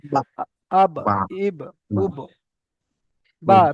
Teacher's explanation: দুটো ঠোঁটের ভিজে অংশ মিলিত হয়ে বা উচ্চারিত হয়। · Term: বায়ের মাখরাজ